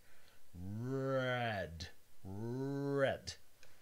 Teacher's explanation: For example, the English R, R, is an alveolar approximant. The body of your tongue sort of goes towards the alveolar ridge, then it comes back down. Red, red. It doesn't quite touch it.